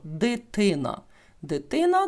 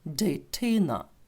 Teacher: язик буде упиратися в такі горбики над зубами які називаються альвеоли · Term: англійський акцент